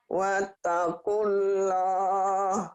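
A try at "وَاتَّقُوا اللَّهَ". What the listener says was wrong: Wattaqullah, jangan wattaqullah itu mah giginya nggak ada. Wattaqullah, ada w-nya. Wattaqullah, wattaqullah, iya. Wattaqullah, jangan wattaqullah.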